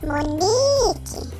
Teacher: o ni é a sílaba tônica da palavra Monique, mesmo ela não estando acentuada.